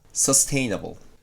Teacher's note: sustainable or to continue forever, has the stress on /teɪ/